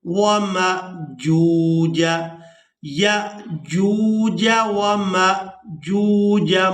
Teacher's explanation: جیم کو واو مدہ کے ساتھ ملائیں گے تو کھینچ کر ادا کریں گے